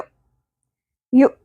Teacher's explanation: حمزہ ساکن کے اوپر جھٹکے کی آواز ہوتی ہے، یو، یو، ٹھیک ہے؟